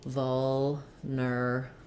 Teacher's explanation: First syllable stress on vul.